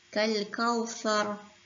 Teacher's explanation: Kita sebut ra tu ditebalkan sebabkan diwaqafkan di situ